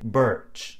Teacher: accent in other words the are after the vowel is silent in several other English accents around the world most famously American English the R is actually pronounced so at the end of the vowel the tongue tends to